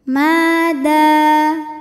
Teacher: Abadam ma hukumnya mad tabi'i zahiri karena ada alif didahului baris fathah. Maka mim panjang 2 harokat.